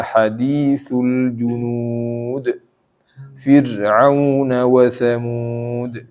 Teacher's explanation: Ini qalqalah semua nih di akhirnya nih.